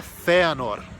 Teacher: O R do Quenya é um R vibrado